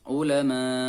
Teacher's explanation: mad arid li sukun dibaca panjang 6 harokat kemudian ditekan untuk mematikan hamzah